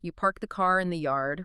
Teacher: In America, most people hit that R really hard. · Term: hard R